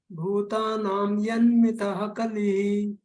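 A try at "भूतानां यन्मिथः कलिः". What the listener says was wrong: Very nice.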